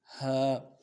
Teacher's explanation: اور ہا بالکل نرمی سے ادا کریں گے. حلق کا وہ اوپر والا حصہ جو زبان کی طرف والا ہے، منہ کی طرف والا ہے، وہاں سے ادا کریں گے، نرمی سے ادا کریں گے، جماؤ سے بالکل ادا نہیں کریں گے.